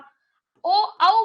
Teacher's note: ओ ओ बोल के देखो होंठ गोल होते हैं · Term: व्रत मुखी